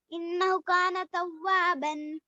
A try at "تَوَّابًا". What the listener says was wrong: بن ہے مگر رکتے وقت کیا کریں گے ایک الف پڑھیں گے توابا